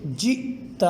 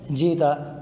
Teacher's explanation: حمزہ ساکن کو ایسے پڑھیں گے کہ اس میں نرمی والی آواز بالکل پیدا نہیں ہوگی بلکہ جھٹکے کے ساتھ ادا کریں گے۔ دیکھیں جیتا، اگر کوئی یوں پڑھے جیتا تو یہ غلط ہے، اور اس کے درست ادائیگی کی نشانی یہ ہے کہ حمزہ ساکن کو ادا کرتے وقت تھوڑی دیر کے لیے آواز رک جائے گی اور سانس جاری رہے گی۔